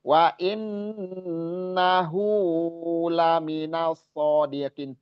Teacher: wa innahu hu-nya kudu panjang 2 harokat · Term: mat silah qasiroh